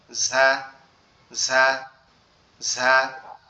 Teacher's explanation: ঝাটা জিহ্বার আগা সামনের নিচের দুই দাঁতের আগার সঙ্গে লাগবে